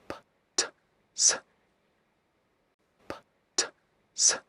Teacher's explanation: These are the consonant sounds you make without using your vocal cords. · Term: voiceless consonants